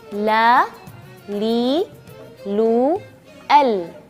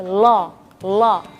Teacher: ketika melafal huruf lam yaitu lamnya tipis ya rata-rata huruf e l dalam bahasa Indonesia itu dia agak tebal